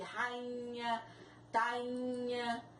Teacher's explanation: Sair, o I está seguido de R, também não leva acento. Rainha, o I está seguido de NH e ele começa a ter um som nasal. Ele tem um som nasal, então não é possível colocar o acento sobre a vogal I, no caso de rainha, tainha.